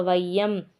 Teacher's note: ஐகாரம் வந்து சொல்லுடைய முதல்ல வரும்போது ஒன்றை மாத்திரை அளவுல ஒலிக்கும் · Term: ஐகாரக் குறுக்கம்